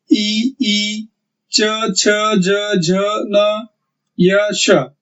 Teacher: हमारे जीभ के नोक के बाद का जो चपटा हिस्सा होता है वो तालू को जाकर लगता है, इसलिए इन्हें तालव्य वर्ण कहते हैं।